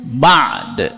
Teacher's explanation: Nun mati. Bertemu ba. Maka bunyi N jadi M dan dengung.